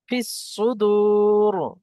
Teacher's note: যেহেতু আমরা ওয়াকফ করছি আর তার পূর্বে হরফে মাদ্দা আসছে, তো এটা মাদ্দে আরজি ওয়াকফি একটু বেশি টান হবে